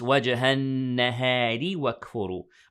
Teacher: Okay, the ra here will be heavy if we stopped as I recited. But if you continued reading, then the ra will be light because it has kasra